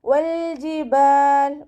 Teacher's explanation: വാവ് ഉച്ചരിക്കുമ്പോൾ ചുണ്ടുകളൊന്ന് വട്ടത്തിൽ പിടിച്ചു കൊടുക്കുക. ലാമ് കൽക്കലയുടെ ലെറ്ററില്ലാത്തത് കൊണ്ട് ഹാഫ് സുക്കൂന് കൊടുക്കുക.